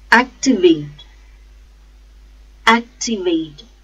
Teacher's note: The stress is on first syllable, act.